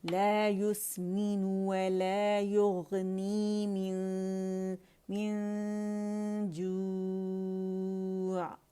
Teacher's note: عین ساکن ہے اور اسے بڑا سافٹلی ریلیز کریں گے, اور اس کی آواز جو ہے کہاں تک جائے گی, وسط اللسان تک.